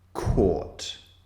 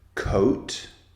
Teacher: to compare the target sound oh and the comparison sound or or is a single vowel sound but it's a long vowel our target sound o is two vowel sounds squeezed together